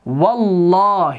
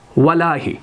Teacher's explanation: اب نہ یہاں پر حمزہ پڑھا گیا, اب نہ یہاں پر لام پڑھا گیا, بلکہ واو کو براہ راست اس لام سے ملایا گیا. اب اسی وجہ سے یہاں پر لام پر تشدید آ گئی.